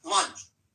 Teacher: This word has the vowel sound, lunch, and it ends with the unvoiced ch, like chop chop, lunch.